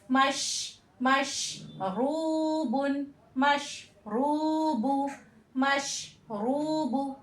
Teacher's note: रा पे पेश होगा तो भी रा मोटा पढ़ा जाएगा